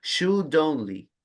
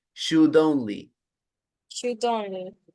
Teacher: ya no diga la D al final de should